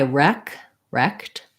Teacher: second syllable stress has the e vowel